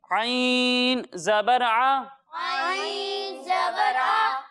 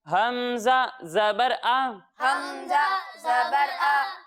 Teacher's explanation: جب ہم عین کی ادائیگی کریں گے تو اسے حلق کے درمیانے حصے سے پڑھیں گے، اور جب ہم حمزہ کی ادائیگی کریں گے تو اسے حلق کے نچلے حصے سے پڑھیں گے